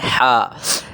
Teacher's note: اور ہا ادا ہوتی ہے حلق کے درمیان سے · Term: وسط حلق